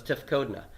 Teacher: the stress has not moved to the final syllable